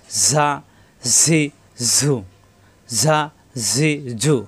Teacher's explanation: ঝা, সফিরে হরফ বাতাস বের হবে।